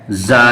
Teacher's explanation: زبان کی نوک اور ثنایا سفلا کا کنارہ اور کچھ اتصال ثنایا علیا سے، یعنی زبان کی نوک کو ثنایا سفلا کا کنارہ اور کچھ اتصال ثنایا علیا سے، یعنی یہ تین چیزوں سے مل کر کے یہ زا نکلتا ہے۔ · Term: زا کا مخرج